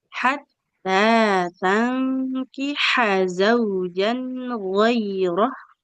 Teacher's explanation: tangkiha ini kan fathah ya, nggak ada alifnya, nggak boleh kita panjangkan.